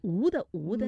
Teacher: 你自己的那个舌头啊，舌头后面的部分呢是往后缩的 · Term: 后鼻音